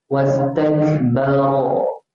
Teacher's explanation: Ro tu tebal di baris atas.